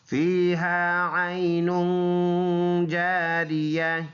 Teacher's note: عین یا زبر عین، یہ یا لین ہے نرم پڑنے والا، نن دو پیش ہے اور اس میں غنہ ہوگا، ناک میں آواز لے کے جائیں گے ، ایک الف کے اندازے سے غنہ اس کو کہتے ہیں۔